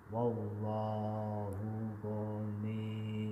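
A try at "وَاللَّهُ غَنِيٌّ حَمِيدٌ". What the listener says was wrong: Oke, kalau abang lebu tasdid itu kan wallahu ghaniyun kan. Wallahu ghani ditekan terus ditahan. Wallahu ghaniyun hamid. Ghaniyun. Ghaniyun.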